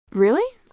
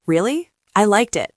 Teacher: It went up at the end. It sounded curious. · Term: intonation